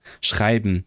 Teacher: You skip the vowel and then the N becomes an M. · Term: assimilates consonants